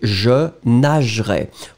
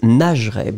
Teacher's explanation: We don't emphasize on the E right after the G, and so it's nagerai.